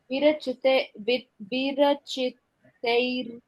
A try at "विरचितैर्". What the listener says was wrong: तई के बाद वो जो मुंह के ऊपर रेफ की मात्रा है उसको बोल लेना है, र। विरचितैर,